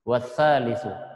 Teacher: Maka cara membacanya bukan dibaca hamzahnya, akan tetapi hamzahnya ditiadakan ketika disambung dengan atau diawali dengan huruf-huruf yang lain